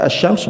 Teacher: Ya, definisi idgam syamsi ini alif lam yang dibaca idgham lam sukun tidak dibaca melainkan langsung melebur ke dalam huruf syamsiah berikutnya